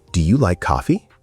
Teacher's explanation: The voice goes up on coffee. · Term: Intonation